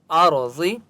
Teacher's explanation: را کو پر پڑھیں گے، ٹھیک ہے، کیونکہ را مستعلیہ میں سے ہے۔ ارض وقف کریں گے۔